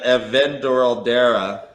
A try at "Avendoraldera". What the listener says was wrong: Yeah, well, you sounded like you almost sounded like the tape went in slow mo. Say it normally.